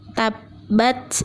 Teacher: kita lanjut kemudian ada Qalqalah Kubro yang bertasydid dalam hal ini kita harus menyempurnakan terlebih dahulu tasydidnya baru kemudian memantulkannya dengan setengah huruf